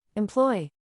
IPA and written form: ɪmˈplɔɪ (Employ)